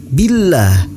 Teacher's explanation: In kuntum tu'minuna billah, hukum bacaannya yaitu tarkik. Billah, lafaz Allah dibaca tipis dan dipanjangkan 2 harokat.